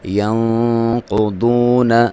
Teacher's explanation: یہاں پہ نون پہ آپ نے اخفا کرنا ہے، ٹھیک ہے، آپ نے ناک میں سے آواز نکالنی ہے، اور ایک الف تک اس کی لمبائی 1 سیکنڈ تک اس کو آپ نے ناک میں رکھنا ہے۔